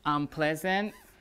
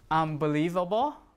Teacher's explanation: The M matches the place of the P and the B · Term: assimilation of place